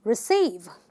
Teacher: you're gonna stress syllable number two